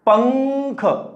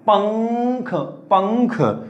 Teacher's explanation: पंख म्हणजे बघ बरं, वाङ्मयांचं ङ ऐकू यायला लागले. पंख पंख, कारण ख हे क वर्गातलं आहे, लक्षात ठेवा.